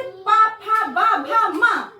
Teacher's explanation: ओष्ठ, अब वो वर्ड जो हमारे ओठों को टच करते हैं, हम बोलने पर हमारे लिप्स जो होती हैं वो टच करते हैं